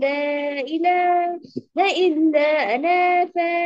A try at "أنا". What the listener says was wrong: আনা টান হবে না, ইল্লা আনা।